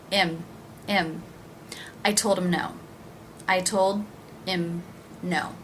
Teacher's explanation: And how will I pronounce him? I will drop that H.